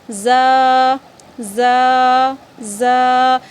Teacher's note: ज़ा ज़बान की नोक और दोनों दांतों के अंदरूनी किनारे से अदा होती है, ठीक है। अब हमारी जो ज़बान की नोक है उसे जो नीचे वाले जो हमारे दोनों दांत हैं, आगे के जो 2 दांत हैं हमारे, उससे अंदरूनी किनारे में, उसके अंदरूनी किनारे में हमें ज़ुबान की नोक को रखना है।